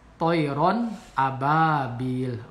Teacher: Alaihim toiron, ini adalah idhar. Ada tanwin fathah sebelum alif ya, sebelum alif atau hamzah ini dibaca jelas. Toiron ababil, ba-nya mat tabi'i itu setelah ba ada harkat fathah, kemudian setelahnya ada alif, berarti ini dua harkat, bisa sebut alif atau hamzah sukun.